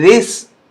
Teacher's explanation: یہاں آپ دیکھیں کہ ذال پہ زبان باہر نکلے گی، سین پہ نہیں